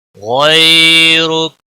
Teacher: غیرک، غین حروف مستعلیہ میں سے ہے، موٹا پڑھیں گے۔ یالین ہے، تھوڑا نرمی کے ساتھ کھینچ کر پڑھیں گے